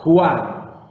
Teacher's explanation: Agrega al inicio mismo de la palabra esa aspiración, de manera que pronunciamos como una J suave. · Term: espíritu áspero